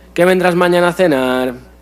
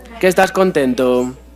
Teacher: En nuestro caso, en catalán tenemos una cosa rara, que tenemos interrogativas con entonación descendente y además introducidas por qué átono. Entonces, no suena a una pregunta.